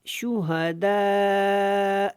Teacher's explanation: اب یہاں پہ شہداء نہیں پڑھنا، شہداء. یہاں پہ مد متصل ہے، اس کو لمبا کریں گے